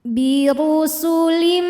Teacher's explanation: cara bacanya tanwin dileburkan ke mim birusulim sambil didengungkan birusulim [Musik] minqika ada hukum ikhfa Hakiki dengan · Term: Idam bhunah